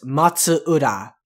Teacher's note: the big thing to look out for for that is that the matsu and ura are separate so it's matsura it's not matsura it's matsura so the matsu